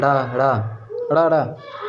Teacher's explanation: जिनके उच्चारण में जीवा की नोक झटके से गिर जाती है तो वह उत्क्षिप्त या फेंका हुआ ध्वनि कहलाती।